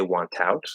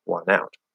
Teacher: very often NT plus vowel the T disappears The N connects to the vowel instead